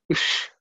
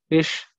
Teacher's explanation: the cerebral sh with the tongue raised up. Then ta and e.